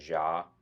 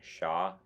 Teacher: You should not do this because ja is just the voiced version of sha.